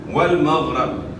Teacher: من المأثم والمغرب، غیر موٹے حروف سے غیر کو آپ نے موٹا ادا کرنا ہے، را کے اوپر زبر ہے، را کو موٹا ادا کرنا ہے